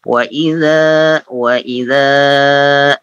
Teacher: ujung lidah bertemu dengan gigi seri atas digigit ya